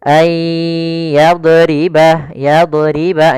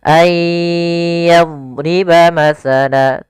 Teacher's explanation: Ya, dia huruf dhad ada satu sifat yang dia khusus untuk huruf dhad, yaitu sifat istitalah, memanjang dhatnya ketika dia sukun. Ayyadriba masala, dan tidak boleh memantul.